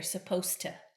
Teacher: I connect the D and the T here